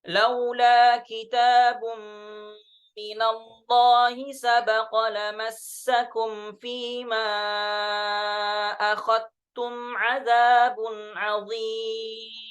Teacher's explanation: dengan mengidghamkan, memasukkan zal kepada ta, kepada huruf ta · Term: biidghamiz dzal fitta